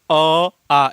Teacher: अ और आ का उच्चारण कहां से हो रहा है कंठ से हो रहा है